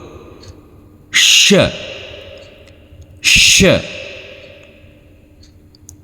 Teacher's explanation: Tengah lidah tengah lidah bertemu dengan langit-langit mulut.